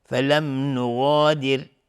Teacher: را ترقیق هست اینجا چون ساکن قبلش کسره اومده